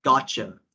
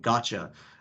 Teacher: the t and the y combined and you get this cha sound